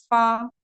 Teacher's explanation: सनाया उलिया का किनारा जब नीचे वाले होंठ के तरी वाले हिस्से से लगे तो ये हर्फ अदा होता है, यानी कि ऊपर वाले दोनों दांत सनाया उलिया, उसके किनारे यानी कि दांत का किनारा, नीचे वाला जो होंठ है उसके अंदर जो कच्चापन रहता है ना, वहां पर जब लगता है तो फा अदा होता है।